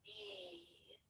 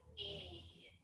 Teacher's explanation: This is a longer sound, and your mouth is in more of a, almost like a smile. E. So you pull your mouth open like that. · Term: green sound